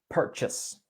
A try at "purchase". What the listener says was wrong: but actually it's a shorter sound when native English speakers say it.